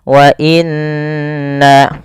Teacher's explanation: ada yang nun berharokat tasydid, harus ditahan suara nunnya. Wa inna, karena dia hukumnya ada bacaan gunnah.